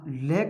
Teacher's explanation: जैसे ये हमारा मुख है, जैसे मैंने उच्चारित किया ल को उच्चारित किया तो इसकी जो जीवा की स्थिति होती है वे क्या है, मसूड़ों को छूती है। अब मसूड़ों को छूने की वजह से जीवा के अगल बगल से वायु निकलती है, जिन्हें हम कहते हैं पार्श्व। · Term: पार्श्विक व्यंजन